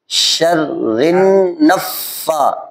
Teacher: را کو نون سے ملانا ہے، نون کو فے سے ملا